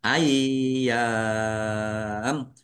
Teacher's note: Yaknya ada tasdidnya dibaca ai dulu ya. Ai baru ya.